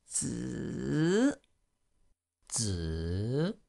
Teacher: with the Z sound, there's a sort of a slight D at the beginning of it